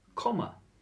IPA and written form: ˈkɒmə (Comma)